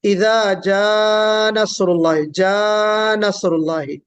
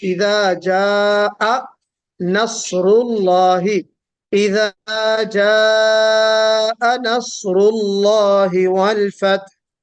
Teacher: جو حمزہ بالکل سیپریٹ ہونا چاہیے، وہ حمزہ سیپریٹ نہ ہو کر مرج ہو گیا